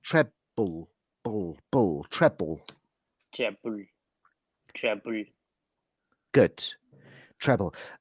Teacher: what i'm hearing a little bit from you is treble treble as if there's a sound between the b and the l